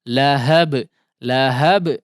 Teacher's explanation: Lahab, lahab jangan ditahan dulu ya. Jangan telat mengeluarkan qalqalahnya. Jangan ada jeda untuk diqalqalahkan ya karena tidak bertasydid